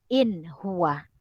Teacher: Jelas sebutan bacaan nun mati apabila berjumpa dengan izhar halki.